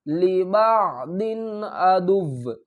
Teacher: یہاں پر ہم گنہ نہیں کریں گے کیونکہ حروف حلقی میں سے آگے حمزہ آ رہا ہے